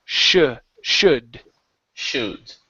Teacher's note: I don't move my lips into an oo sound.